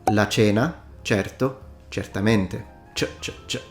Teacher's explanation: the C in its voiceless post-alveolar affricate form, ch. So in standard Italian, the C can be pronounced ch or k.